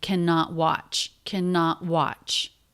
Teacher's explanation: the T is a stop T because the next word begins with a consonant